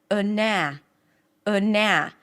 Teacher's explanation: So the first syllable is super short, unstressed, quick, neutral. The second syllable is long, loud, higher in pitch. · The first syllable, in this case, is a schwa, a very reduced, a neutral sound.